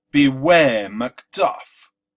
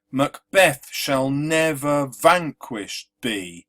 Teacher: writes with an unstressed Sy syllable followed by a stress so beware McDuff is unstressed stressed unstressed stressed